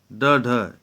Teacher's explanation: कुल 8 होते हैं, ये है एक है उत्क्षिप्त व्यंजन। उच्चारण करते समय जिह्वा का अग्रभाग झटके से नीचे गिरता हो